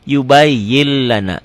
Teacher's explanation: ghunah Kenapa karena nun mati ketemu lam ya idgham bila ghunah idgham diidgamkan dileburkan tanpa didengungkan tanpa ditahan